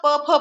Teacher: ओठाला ओठ लागतात ओठांचा आकार चेंज होतो त्याला ओष्ट्यवर्ण म्हणायचं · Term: ओष्ठ्यवर्ण